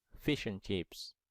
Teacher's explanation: Suara huruf E-nya dibaca E dan huruf D-nya dihilangkan.